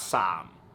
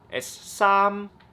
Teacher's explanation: That's tone 1 in Cantonese. High and flat.